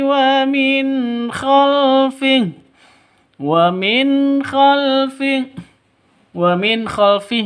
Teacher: nun mati bertemu dengan ko jelas terang karena bacaan izhar halq nun mati bertemu dengan k izhar halq Jelas terang tidak boleh disentak tidak boleh didengungkan.